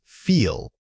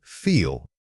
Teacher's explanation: When you say feel, consciously exaggerate the length of that e sound. It should feel like a sustained note coming from your throat.